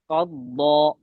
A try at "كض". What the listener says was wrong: কাফ মোটা হওয়া যাবে না كض